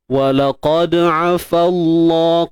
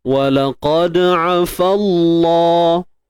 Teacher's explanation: Qalqalah sughra, lantun kecil je, lemah.